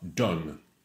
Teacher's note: Alors, done ne diphtongue pas.